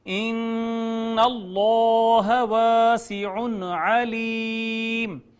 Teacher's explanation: نون مشدد پہ غنہ، اس میں جلالت ما قبل مفتوح ہونے کی وجہ سے مفخم